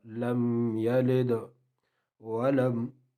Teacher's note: یلد دال ساکن ہے، آگے زیر ہے، اس میں قلقلہ ہوگا